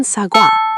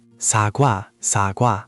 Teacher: These vowels start with a lip-rounded glide, like saying wa in English. They're built on either o or u as a base.